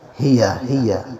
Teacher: ہیا کو آپ نے انتہائی حلق سے ادا کرنا ہے